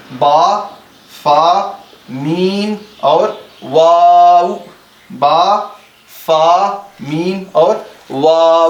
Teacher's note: इन 29 हरूफ में 4 हरूफ ऐसे हैं जिनको होंठों से अदा किया जाता है।